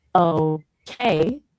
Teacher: Some people say okay with two clear syllables emphasizing both parts